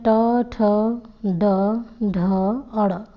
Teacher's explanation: इनका उच्चारण स्थान मूर्धा है। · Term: मूर्धन्य